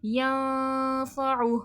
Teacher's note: ین میں اخفا ہو رہا ہے، نون کی آواز چھپے گی، اور ہاں یہاں پر دیکھیں حرکات ہے، حرکات کا وقف ساکن ہو جاتا ہے۔